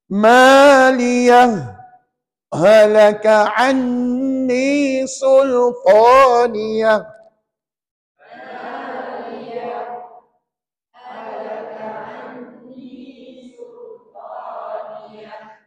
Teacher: Lepas bunyi begitu, puan-puan tahan nafas 2 second. Tahan nafas 2 second, itulah yang dia katakan sakta. Lepas tu sambunglah halaka anni sultaniyah.